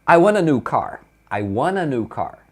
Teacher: quando você junta o want com o a, eles emendam na hora de falar